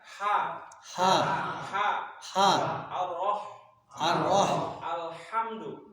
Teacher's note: Tengah tenggorokan, ya. Namanya wasatu atau wusto al-halku, namanya tengah tenggorokan.